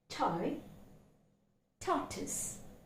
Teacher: the phoneme t, which is a voiceless consonant